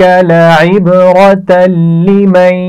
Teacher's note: تنوین کے بعد لام آ گیا ہے تو یہاں پر غنہ نہیں کیا جائے گا لیکن ملا کر پڑھنا ہے ہم نے